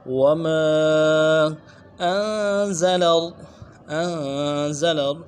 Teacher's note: انزل نون ساکن میں غنہ کریں گے ان میں، اور زا کو واضح کریں گے